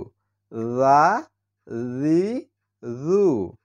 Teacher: অর্থাৎ এর উচ্চারণটা হচ্ছে জিহুব্বার আগা এবং উপরের দাঁতের আগা লেগে উচ্চারণ করতে হয় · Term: জাল